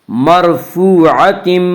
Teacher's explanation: واو مدہ وہ واو جو ساکن ہو اور اس سے پہلے پیش ہو، واو مدہ کو ایک الف کے برابر کھینچ کر پڑھیں گے۔